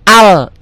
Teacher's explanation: Ini Hamzah wasol. Jika nggak di wasol, berbunyi A.